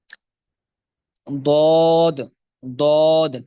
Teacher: اس سے ضاد ادا ہوتا ہے، اس کو حرف حافیہ کہتے ہیں۔ ضاد جو ہے وہ زبان کا جو کنارہ ہے وہ دائیں بائیں یعنی بغلی کنارہ اگر دائیں اور بائیں داڑوں کو لگے تو یہ ضاد ادا ہوگا